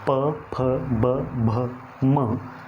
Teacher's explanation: प वर्ग जो है, जब हम इसका उच्चारण करते हैं तो प, फ, ब, भ, म, तो इसमें हमारी जीभ कहीं नहीं टकराती है, हमारे होठ आपस में मिलते हैं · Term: ओष्ठ